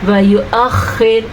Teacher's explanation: خا کو آپ نے پر پڑھنا ہے کیونکہ خا حروف مستعلیہ میں شامل ہے